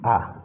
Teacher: उच्चारण में मुख सबसे अधिक खुलता है उन्हें हम बोलते हैं विवृत स्वर